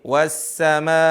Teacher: nggak usah ragu-ragu untuk memanjangkan berharokat 5-6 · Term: mad wajib